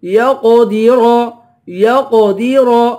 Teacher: قاف کو پر پڑھیں گے، را کو بھی پر پڑھیں گے